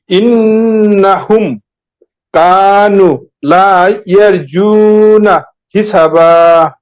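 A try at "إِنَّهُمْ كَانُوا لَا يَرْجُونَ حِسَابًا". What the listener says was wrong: এই যে সিনে একটু টান দিব হালকা। একালিফ।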